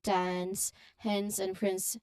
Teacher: It's a continuous flow of air from the nasal N to the S sound. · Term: NS